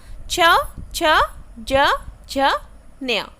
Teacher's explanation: आपकी जो जीभ है वो जो तालु में ऊपर वाला जो हिस्सा है आपके मुंह के उसमें टच कर रही है